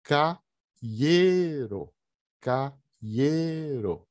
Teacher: O acento cai em E.